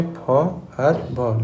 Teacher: লেবিও dental কোন কোন আর্টিকুলেটরের সাহায্যে? লোয়ার লিপ আর আপার ফ্রন্ট টিথ।